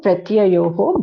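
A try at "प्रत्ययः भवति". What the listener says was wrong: Pratyayah bhavati, not pratyayoho. Don't add visarga to pratyayoho. Pratyayah only becomes sandhi. Pratyayah. Pratyayah or pratyayo, not pratyayoho.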